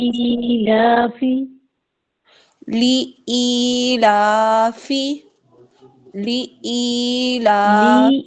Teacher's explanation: لی کو کھینچنا نہیں ہے، ای کو اچھا آگے کھینچنا ہے. لی اچھا. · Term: حروف مدہ